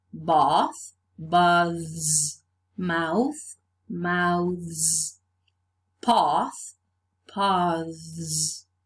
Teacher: the voiceless fricative changes to the voiced th and then z